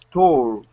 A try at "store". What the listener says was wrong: Okay, one more time. Store. Store. All right, we're missing that R at the very end. You're saying store. Okay, give me an at the very end. Store.